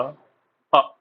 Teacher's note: और जो मध्य से बोला जाता है वो है छोटा अ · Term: मध्य स्वर